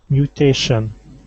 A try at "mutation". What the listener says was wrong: Excellent, nice job.